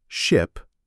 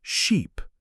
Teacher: Ship has a short I sound. Sheep has a long e sound.